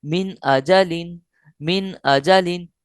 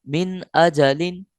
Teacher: یہاں غنہ نہیں کرنا، یعنی ناک کے بانسے میں آواز کو نہیں لے کے جانا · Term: اظہار